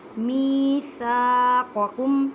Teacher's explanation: یا ساکن سے پہلے زیر ہے، یا مدہ کا قاعدہ کریں، مینس کے ایک الف کی مقدار میں کھینچ کر پڑھیں۔ الف سے پہلے زبر ہے، الف مدہ کا قاعدہ کریں، الف یعنی کہ ایک الف کی مقدار میں کھینچ کر پڑھیں۔